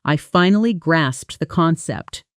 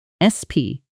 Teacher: Don't soften it into grass. Keep that final P. Crisp and present.